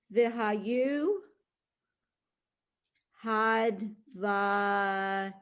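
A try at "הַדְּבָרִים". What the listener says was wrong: Okay, that's a R sound, a resh.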